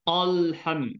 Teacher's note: Jadi hamzah wasal ni sifatnya nipis. Maka jangan jadi o lah. Al bukan al.